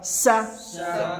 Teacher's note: سین جو ہے وہ سیٹی والا ہے، بھاری نہیں